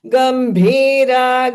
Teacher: So gambhira, the bha is a mahaprana. Dirgha also.